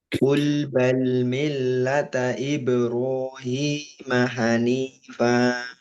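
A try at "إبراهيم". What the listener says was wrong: Tipiskan banyak ibe, ibero, ibe.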